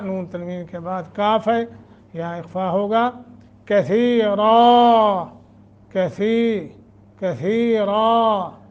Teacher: نون تنوین کے بعد کاف ہے، یہاں اخفا ہوگا